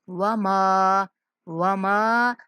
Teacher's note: میم کو منہ کھول کے ادا کریں گے، ناک میں آواز نہیں جانی چاہیے